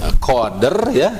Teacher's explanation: huruf dal berharokat sukun di tengah pengucapan kata atau di tengah bacaan. Dibaca memantul tipis. Huruf ro ya, huruf ro sugro sukun di akhir ayat karena diwakafkan. · Huruf ro ya, huruf ro sugro sukun di akhir ayat karena diwakafkan. Huruf ro menjadi sukun dan dibaca tafkhim tebal ya, karena huruf sebelumnya dal berharokat sukun dan didahului harokat fathah. Gitu, karena didahului harokat fathah maka ro-nya ini jadi tebal.